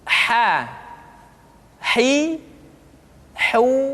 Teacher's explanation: dikeluarkan dari tengah-tengah tenggorokan di tengah-tengah tenggorokan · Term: huruf ha